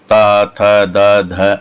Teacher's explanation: टम, ये थोड़ा सा मूर्धा से, मूर्धन्य स्थान है, मूर्धा से जीभ टकराती है, तो मूर्धन्य स्वर बोलते हैं इनको, मूर्धन्य व्यंजन बोलते हैं इनको। और तम, ये दंत्य है, यानी कि जीभ दांत से लगती है, तो इनका जो उच्चारण स्थान है वो दांत से, यानी जीभ दांत से टकराती है, तो त थ द ध ऐसे बोलते हैं।